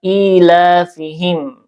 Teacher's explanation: di sini ada mad badal ya, panjangnya dua harakat